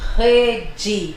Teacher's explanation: Lembrando que a letra E no final, quando não vem acentuada, ela tem som de I.